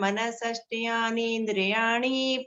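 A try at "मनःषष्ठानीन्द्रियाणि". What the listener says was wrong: मनःषष्ठानि इंद्रियाणि, मनःषष्ठ्यानि नहीं है, मनःषष्ठानि इंद्रियाणि।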